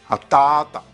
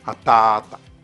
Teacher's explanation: Cela donnerait un allongement de la deuxième syllabe, ta, en atata, comme s'il y avait un tarava sur le a de ta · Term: allongement vocalique